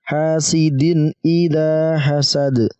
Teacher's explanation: Hasidin tidak didengungkan dan tidak disamarkan, tapi dijelaskan. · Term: izhar